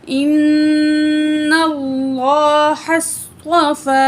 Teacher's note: صاد اور طا دونوں کو موٹا کر کے پڑھیں گے، حروف مستعلیہ میں سے ہے، ٹھیک ہے.